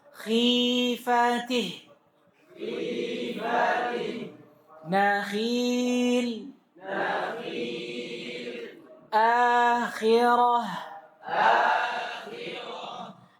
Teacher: Adapun kalau k ini dikasrah, maka K pada saat itu berada di tingkatan ketebalan yang paling rendahnya.